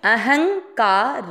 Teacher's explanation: ह के ऊपर बिंदी शब्द के बीच में उसको आधा न नाक से बोलेंगे, अहंकार र में अ मिक्स करना है अहंकार। · शब्द के बीच में उसको आधा एन नाक से बोलेंगे